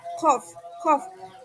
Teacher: mengangkat bagian belakang lidah ya, qaf, qaf, dan bertemu dengan velum, maka yang terjadi adalah di belakang keduanya ada gelembung udara dari paru-paru.